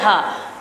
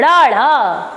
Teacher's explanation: जब आप इसका उच्चारण करते हैं तो जीभ मुख में उड़ती है, कहीं टच नहीं होता।